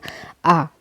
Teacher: आ को जब हम बोलते हैं तो हमारा मुंह पूरा खुलता है और आवाज डायरेक्टली बाहर आती है और पीछे गले से यानी कंठ से बाहर निकलती है इसलिए इसको अ पश्च स्वर कहा गया है ठीक चलिए इसके